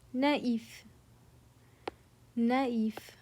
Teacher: the tréma forces you to slash them apart and pronounce them as 2 distinct syllables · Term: le tréma